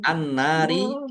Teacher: Karena tidak dibaca langsung masuk ke huruf berikutnya yaitu nun ditandai nunnya ada tasdidnya. Nun tasdid dibaca ghunah atau mendengung. Ditahan biar nampak mendengungnya.